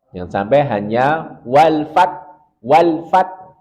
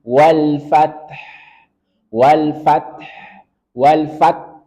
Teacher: kita tetap harus baca huruf han-nya Jangan sampai hilang